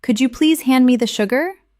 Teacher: Listen to the way my voice rises on, Could you, and falls gently at the end.